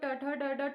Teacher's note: तो जीवा हमारी उल्टी हो जाती है, मुड़ जाती है, इसलिए इसको मूर्धा बोलते हैं